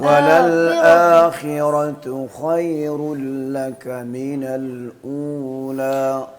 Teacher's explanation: یعنی جو زور آپ دے رہے ہیں وہ خا پہ دے دیں را کی بجائے.